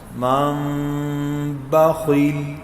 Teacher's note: ہونٹوں کو نرمی سے ملانا، اسی نرمی سے ملانے کا نام اخفاء ہے۔